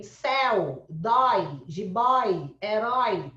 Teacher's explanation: Tem o ó aberto? Tem. Tem o é aberto? Tem. Então, é ditongo aberto.